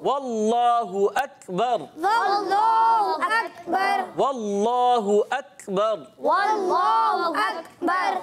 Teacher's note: इल्लल्लाहु, इसमें जलालत अल्लाह पाक के लाम से पहले ज़बर है, अल्लाह पाक का लाम पुर करके पढ़ेंगे